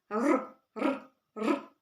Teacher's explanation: слова розпочинаються на спільну першу літеру р звук р вона приголосна коли ми її вимовляємо нам заважають зубки та губки у нас язичок впирається в передні зуби і виходить звук р